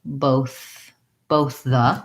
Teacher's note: So just now when I said that, I said the words separately, both the, and I used a voiceless TH on both and a voiced TH on the